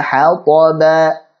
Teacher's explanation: Ha tipiskan, ta tebalkan, ba tipiskan.